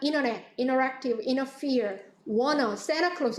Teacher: 그래서 Santa Claus 같은 경우에는 이렇게 아주 자주 쓰는 frequency가 높은 단어는요, 이렇게 거의 사람들이 언제나 T를 발음하지 않습니다. 그래서 자주 쓰이지 않는 단어는 뭐 T를 발음했다 안 했다 하는데 많이 쓰는 워너라든가 Santa Claus 이런 경우에는 생략하고 쓰는 경우가 많죠. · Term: elided T 사운드